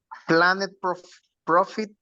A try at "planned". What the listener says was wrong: Planned. Pronunciation, exactly. In pronunciation, it goes with final d. Planned.